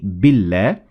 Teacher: now if the alif is preceded by kesar or any tenuine you pronounce the L in Allah lightly or empty-mouthed as in the word lit